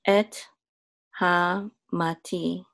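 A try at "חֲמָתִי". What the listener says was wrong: You want to make the vowel of the chet shorter than normal because it has a shavah.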